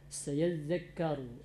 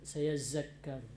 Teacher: za benar-benar di ujung lidah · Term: huruf zal